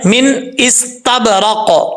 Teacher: سین میں سیٹی آئے گی، تا بریک پڑھا جاتا ہے